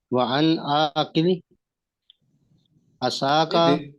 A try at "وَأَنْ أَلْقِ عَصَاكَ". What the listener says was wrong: وَأَنْ کے بعد کیا پڑھا ہے؟ کی نہیں ہے، القی۔